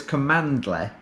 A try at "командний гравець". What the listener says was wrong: Well, no, you're pronouncing command. You need to say it with an accent like komandly gravits.